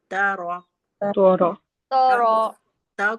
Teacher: फिर आता है त देखिए त को हम बारीक पढ़ेंगे। त में जबान की नोक हमारी कहां लगी? ऊपर की सामने।